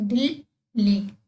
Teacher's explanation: इसमें जो ला है वो आपका दो बार हो रहा है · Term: द्वित व्यंजन